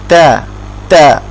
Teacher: আপনার জিহ্বার আগার সাইডটা উপরের দাঁতের গোড়ার সাথে লাগিয়ে তারপর আমরা উচ্চারণ করতে শিখেছিলাম